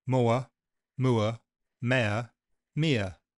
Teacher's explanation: So essentially, you say a schwa, instead of the R, which makes it a bit diphthongal. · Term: Centering diphthongs